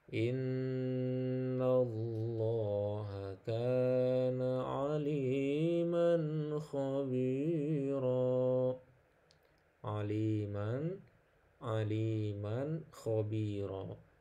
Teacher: Dibaca jelas, izhar satu ketukan dan tidak dengung.